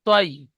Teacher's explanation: তৈরন তৈ বলে টান দিচ্ছেন আপনি, টান হবে না। আমি যেমন শর্টে বলছি ঠিক এরকম বলেন, তৈ।